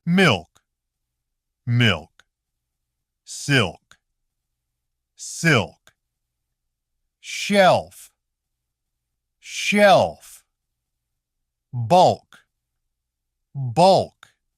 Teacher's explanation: the L still stays relatively clear